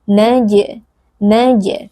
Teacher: Huruf jim yang sukun bersifat qalqalah, bunyinya wajib kita pantulkan.